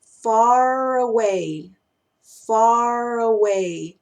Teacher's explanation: suena como si fuera una sola palabra que tiene una r entre medio y en el fondo estamos conectando en esa situación una R · estamos conectando en esa situación una R con una vocal y extendemos la r hasta que nos encontremos con la palabra que tenga una vocal al principio · Cuando los conecto suenan far away, far away. Y ahí suena como si fuera una sola palabra que tiene una R entre medio. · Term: extensión de la r, extensión de la R